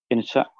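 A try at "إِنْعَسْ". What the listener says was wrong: Ayo, hurufnya jangan dipindah. In as, mengantuklah. In as.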